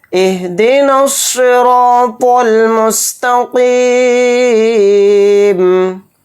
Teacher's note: پھر اسی طرح سے قاف کو موٹا پڑھیں گے، اور پھر قاف یا زیر قی، یہاں پر حروف مدہ یعنی یا مدہ آ رہا ہے تو قاف یا زیر قی کو ایک الف کی مقدار کھینچیں گے · صاد کو موٹا پڑھیں گے، یعنی صاد حروف مستعلیہ کے حرف میں سے ایک حرف ہے، اور پھر را الف زبر را، اس کو ایک الف کی مقدار کھینچ کر پڑھیں گے، را الف زبر را کو، اور را کے اوپر زبر ہے تو را کو بھی یہاں پر موٹا پڑھیں گے، اور طوا کو بھی یہاں پر موٹا پڑھیں گے.